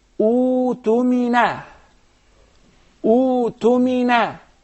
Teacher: You don't pronounce the Hamza. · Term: Maddul Badal